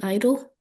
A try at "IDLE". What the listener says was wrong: It is not idle. Don't call it idle. I know it spells like I do, but it's IDLE. Just pronounce it out. Call out the letters. IDLE.